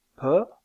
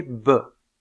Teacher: des occlusives le voile du palais est relevé bien sûr et dans le cas de P la consonne est sourde c'est-à-dire que les cordes vocales ne vibre pas dans le cas de B be plutôt la consonne est sonore